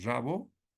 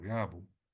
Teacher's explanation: El fonema aquí R es sustituido por la G.